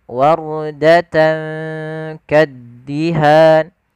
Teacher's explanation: Pada lafal warda, di sini ada huruf ra sukun ditandai dengan warna biru, yang dimana di sini kita namai dengan huruf ra tafkhim, yaitu ra yang dibaca dengan bacaan ra tebal, bukan dibaca wardata, yaitu huruf ra-nya tipis tapi tebal.